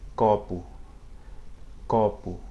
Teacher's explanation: the letter P is pronounced similarly as it is in English, maybe with a little bit less explosive puff of air at the beginning